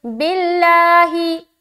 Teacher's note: जब भी लफ्ज़ अल्लाह के लाम से पहले वाले हर्फ के नीचे ज़ेर हो तो लफ्ज़ अल्लाह का लाम बारीक पढ़ा जाएगा